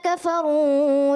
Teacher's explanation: جی ماشاءاللہ جو پڑھا، جی ایک تو تھوڑا سپیڈ بھی تھی، اور کفرو پہ یہاں مد اصلی حرف مدہ ہے، مد نہیں ہے. آپ تھوڑا سا مد اصلی حرف مدہ کو زیادہ کھینچ دیا، تو یہ نہیں ہونا چاہیے.